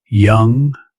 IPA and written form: jʌŋ (Young)